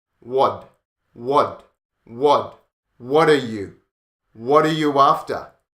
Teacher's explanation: So when you have a T before a vowel sound, the T becomes like a D. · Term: connected speech